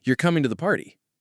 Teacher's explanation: A rising tone at the end of a statement can make it sound like a question.